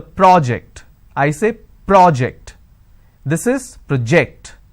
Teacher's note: when I'm stressing on the first syllable, it becomes a noun